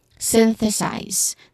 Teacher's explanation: size, it begins with a hissing sound, letter S, followed by a diphthong I, and then a buzzing sound, letter Z at the end. · The stress is on the first syllable.